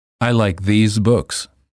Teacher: The word these is plural and is pronounced with a long vowel E and a Z sound.